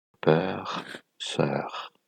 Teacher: Quand ce phonème se trouve dans une syllabe fermée, rappelez-vous que la syllabe fermée, c'est la syllabe qui termine avec le son d'une consonne. Vous allez utiliser un phonème ouvert, dans ce cas-là, le E.